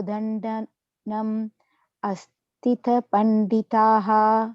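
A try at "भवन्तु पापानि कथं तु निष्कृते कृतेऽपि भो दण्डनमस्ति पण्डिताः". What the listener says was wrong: You're putting an extra tha, asti, not asti.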